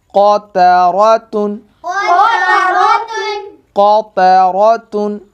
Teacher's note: क़ाफ़ हुरूफ़ मुस्तालिया है और उसके बाद जो रॉ आ रहा है उसको आपने मोटा करना, क्योंकि रॉ के ऊपर ज़बर आ रही है।